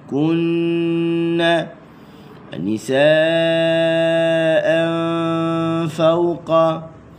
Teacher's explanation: Semua tu kena baca dengan dengun. Dengun. Okey. Bila sebut dengun dua harakat.